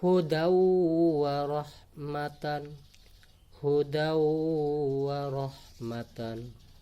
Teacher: Kemudian tanwin bertemu huruf waw, karena waw ini huruf idgham biguna dibaca terdengar tasydid. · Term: idgham bi gunnah